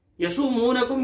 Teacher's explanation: यहां सीन को और मीम दोनों को खींच के पढ़ेंगे